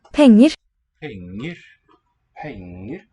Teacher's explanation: there's that falling motion on the stress syllable and then nice clear upstep, like a fifth or so, to the unstressed second syllable